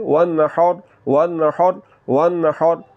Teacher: آپ نے حلق کے درمیان والے حصے سے آواز کو نکالتے ہوئے اس کو پڑھنا ہے